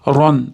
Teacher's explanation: r ustida r tafhim yo'g'onroq aytiladi.